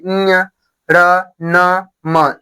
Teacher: इसको बोलेंगे तो क्या होगा, नाक से ध्वनि आती है। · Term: नासिक के वर्ड